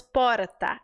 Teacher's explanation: a língua sobe bate no céu da boca rápido tá vendo que é tão rápido que às vezes nem dá